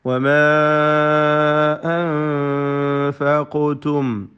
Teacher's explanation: അലിഫിനെ മദ് മുൻഫസിൽ ജായിസ് നൽകി 4-5 ഹറക്കത്തിൻ്റെ അളവിൽ ദീർഘിപ്പിക്കൽ അനുവദനീയമാണ്.